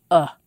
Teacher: the sound is not front and not back not high and not low it's a very neutral sound a relaxed middle central vowel sound